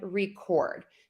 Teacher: when we have the verb, the second syllable gets the louder, longer, and higher.